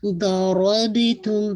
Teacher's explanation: ضربتم با پہ قلقلہ، را اینڈ ضاد بہت ہیوی رہے گا، تم پہ ناقص ہونا.